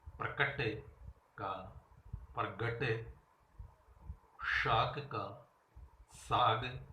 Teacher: जब शब्द में विद्यमान कोई अघोष ध्वनि बाद में सघोष हो जाती है, उसे घोषीकरण कहा जाता है।